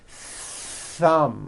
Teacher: you must stretch out the th sound and hear the air friction